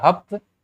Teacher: स बदल करके ह में बदल गया